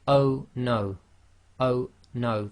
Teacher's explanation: the O suddenly stops and there's a slight blocking. That's the what we say in English is a glottal stop. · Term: Hamza